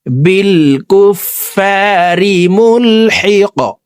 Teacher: কফ কলকলার হরফ উপরের দিকে ধাবিত করে ধাক্কা দিয়ে এই কফকে সাকিন করতে হবে